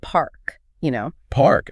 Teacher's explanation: In a lot of American accents, you pronounce that R very clearly. But in many British accents, it's not pronounced at all. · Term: R sound